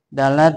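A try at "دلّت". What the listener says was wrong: Dalat bukan dalat, tasdid lamnya dalat, maka itu menjadinya dalil.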